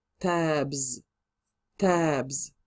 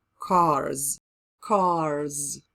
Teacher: So when the word finishes in the letter that is voiced, we add s to make plural. But this s pronunciation will change into a z.